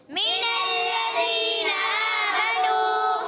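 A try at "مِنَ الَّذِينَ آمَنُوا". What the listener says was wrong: میم کے نیچے زیر ہے, حرکت ہے, اس کو کھینچنا نہیں ہے, نون کو لام سے ملانا ہے.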